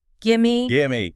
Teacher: The vowel sound in give might weaken a bit. The V sound sort of merges into the M.